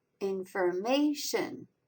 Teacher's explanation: The third syllable, may, is the strongest accented. In also has a lighter accent mark.